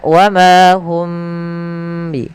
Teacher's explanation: Di sini ada kembali mim mati bertemu ba, yaitu hukum tajwid berupa mim mati bertemu dengan huruf ba. Maka ini cara membacanya, yaitu suara mimnya ditahan, jangan langsung dilepas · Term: ikhfa syafawi